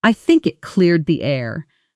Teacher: Notice how cleared the often blends together in fast native speech with the dah softening into the next word rather than standing out sharply.